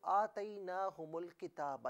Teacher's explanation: آتیناہم کی میم کو لام کے ساتھ ملائیں گے، درمیان سے حمزہ کو حذف کر دیا جائے گا، یعنی نہیں پڑھا جائے گا.